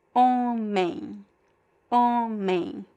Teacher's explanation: at the end, there is no M or N sound, but it's closer to N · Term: nasal diphthong